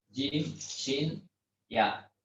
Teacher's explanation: Jadi tengah lidah menempel ke bagian langit-langit atas.